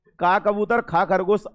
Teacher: का ख बोलने में आपका कंपन नहीं है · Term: अघोष